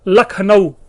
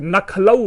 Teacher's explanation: तो पहला जो ल है वो ना बन गया, और जो ना है वो ल बन गया, और बन गया नखलऊ।